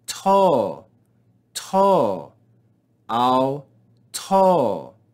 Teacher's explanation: read these together notice the mark that there is no aspiration notice the circumflex accent rise and fall